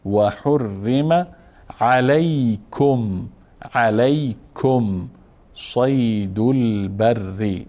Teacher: و حرم اینجا را مفخم بود چون مفتوح است